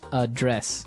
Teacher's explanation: but you pronounce it differently so the verb address has the the stress on the second syllable